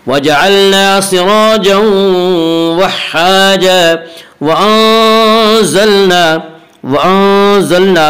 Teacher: وَأَنزَلْنَا میں اخفاء حقیقی ہوگا۔ اس کا قاعدہ ہے کہ نون ساکن اور تنوین کے بعد اگر حروف حلقی، حروف یرملون اور با کے علاوہ کوئی اور حرف آئے تو وہاں پہ اخفاء حقیقی ہوگا۔